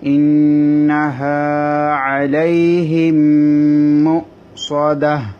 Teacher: এখানে ইন গুণ হবে নুনের মধ্যে তাসদীদের কারণে, হা জবর বাম পাশে খালি আলিফ এক আলিফ টানতে হবে।